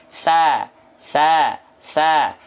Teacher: sama-sama makhraj makhrajnya sama tempat keluarnya sama dari ujung lidah ke gigi seri bawah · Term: huruf Sin